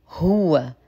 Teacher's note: اتمام ضمه الها مع الترقيق